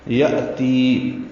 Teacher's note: یأتی حمزہ ساکن جھٹکے سے پڑھا جائے گا. تی یا مدہ ہے.